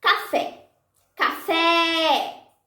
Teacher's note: Fé é a sílaba tônica.